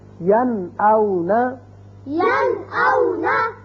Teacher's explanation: نون ساکن کے بعد حمزہ آ گیا، لہذا نون کو ظاہر کر کے پڑھیں گے